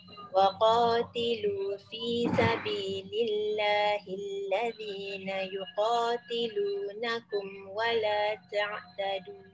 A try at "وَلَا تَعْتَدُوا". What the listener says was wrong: Wala ta'tadu. Dua harakat je. Sebab dia kalau yang panjang tu dia guna untuk apabila bertemu hamzah. Bila kita berhenti dia tak gunalah, dia jadi mak asli je.